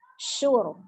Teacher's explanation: Ada huruf ro sukun sebelumnya dhamma, berarti ro-nya dibaca dengan tebal.